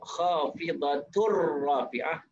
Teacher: Idgham bila gunnah. Kita memasukkan dalam huruf ra tanpa dengung.